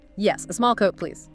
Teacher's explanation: Stress small. Clear, polite, maybe falling tone.